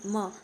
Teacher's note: उच्चारण करते समय नाक का प्रयोग भी किया जाता है और म क्या है? एक अनुनासिक वर्ण है